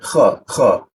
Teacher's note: Kha, ada ngoroknya, itu sifat huruf kha, ada ngoroknya, harus kita baca agar tidak tertukar dengan huruf ha.